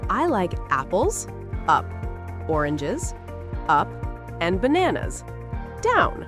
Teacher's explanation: Your voice goes up for each item, but goes down for the last item.